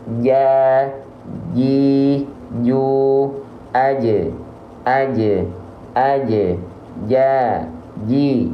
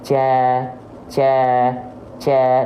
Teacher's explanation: menyentuh dia ja ji coba betul-betul tempelin lalu lafalkan huruf Jim kalau tepat makhrajnya enggak ada celah di antara tengah lidah dan langit-langit ya nempel betul-betul maka dia tidak akan mengalirkan nafas · jim itu keluar dari bagian tengah lidah kita, diangkat ke langit-langit dan menyentuh dia.